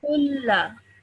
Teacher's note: So over here, the vowel, this alif, and this alif are all three of them silent letters, okay? So what you do is you straight away join the qaf to the lam